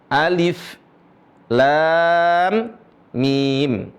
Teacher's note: Lam dibaca panjang. Kenapa? Karena ada mim sukun.